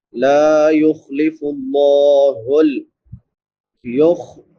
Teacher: پڑھا جاتا ہے، لا یخلف اللہ یخ، خا پر پڑھیں گے، لفظ اللہ بھی پر پڑھا جائے گا کیونکہ لفظ اللہ سے پہلے پیش ہے